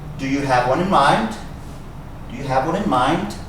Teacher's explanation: this D sound actually sounds like a t